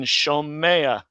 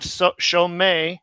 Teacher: With third guttural verbs, a seri patak is found, like a glide vowel, as in shomea, because you can't just have shomei, because gutturals prefer A class vowels.